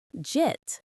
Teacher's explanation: It often disappears entirely. So j eat gets compressed into one syllable.